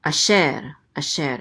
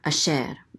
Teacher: And this is the trope or accent mark, so the accent is on the second syllable.